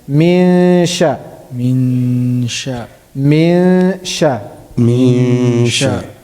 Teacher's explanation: Where is sheen pronounced from? The tongue, right? Tongue. The middle of the tongue. Middle of the tongue.